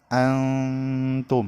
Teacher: nun sukun dibaca samar dan didengungkan selama tiga harokat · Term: ikhfa Haqiqi